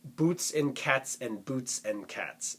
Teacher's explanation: you get that hard C or K sound at the beginning of cats, the tss at the end of cats